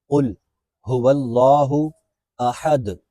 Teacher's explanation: قل، یہاں قاف ہے، اس کو موٹا پڑھنا ہے